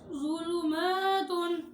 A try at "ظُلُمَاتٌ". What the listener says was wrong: ये ज़ा पे सीटी ना निकलो जू का ना ज़ुलु